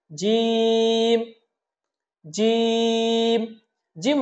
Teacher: জিম যখন আমরা বলবো তখন জিহ্বার মধ্যখান থেকে একটু শক্ত করে বলবো আমরা।